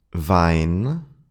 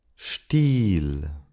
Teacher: the IE, which is pronounced like a long E. It's not a diphthong because you make only one sound